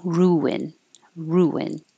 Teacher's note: your lips go small for the ooh and then back for the I, so it makes an invisible W.